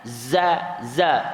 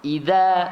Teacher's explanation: Huruf zai bila kita sebut, lidah kita tak sampai ke gigi. Tapi huruf zal memang kena pada gigi kacip sebelah atas.